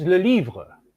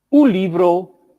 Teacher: All these forms start with a lateral consonant, l.